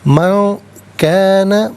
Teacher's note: من میں نون ساکن ہے، اس کے بعد کاف حرف اخفا ہے۔ نون ساکن کے بعد یا تنوین کے بعد حرف اخفا جب بھی آئے تو نون ساکن ہو یا تنوین ہو اسے اخفا کے ساتھ پڑھتے ہیں۔